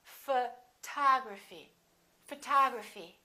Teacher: We stress the second syllable.